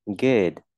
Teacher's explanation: Chữ này là âm u ngắn nhé, thì mình chuyển thành đọc thành âm ư